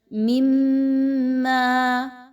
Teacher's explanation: میم مشدد کا غنہ، آواز کو ناک میں لے کر جائیے۔ میم الف زبر ما، الف مدہ ہے، 1 سے 2 الف کے برابر، اس کی ادائیگی رکھیے۔